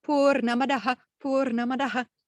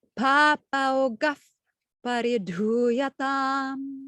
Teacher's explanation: when it follows with a pakara, this visargaha turns into a f, f, f. That's why you have purnamadaf, purnamidam. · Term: sandhi